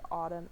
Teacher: the open o which is a low mid back rounded tense vowel